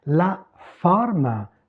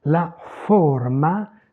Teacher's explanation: La forme, c'est ouvert en français. La forma, c'est fermé en italien.